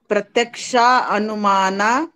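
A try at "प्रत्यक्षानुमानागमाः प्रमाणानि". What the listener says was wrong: नहीं आप उसको तोड़िए नहीं, आप जब सूत्र पूरा पढ़ रहे हैं तो पूरा लाइन में पढ़ेंगे उसको, आप अपने हिसाब से विच्छेद नहीं करेंगे okay. आप फिर से बोलिए प्रत्यक्षानुमाना गमाः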